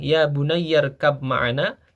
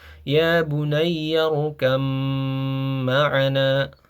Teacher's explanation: Huruf ba ini menjadi masuk ke huruf mim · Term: idgham mutajanisain